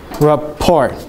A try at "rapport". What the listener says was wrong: Yeah, say it again, but don't say the T. It's a French word and the T is silent.